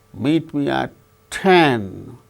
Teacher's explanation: at 10 is the tonic syllable or which gains more importance than meet